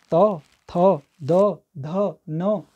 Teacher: हमारी जीभ दांतों से टकरा रही है तो वो दंत है